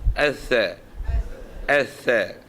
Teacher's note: kalau dengan sebutan makhraj huruf, dia ialah hujung lidah dengan hujung gigi. Hujung gigi kapak.